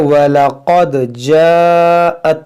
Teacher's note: ये क़ाफ हुरूफ मुश्तालिया है, इसको मोटा पढ़ेंगे, और यहाँ दाल साकिन है तो इसमें कलकला करेंगे